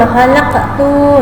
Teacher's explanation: Berharakat sukun di tengah kata, maka dibaca memantul khalaqtu ya, dengan pantulan tidak terlalu kuat, sedang-sedang saja. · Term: qalqalah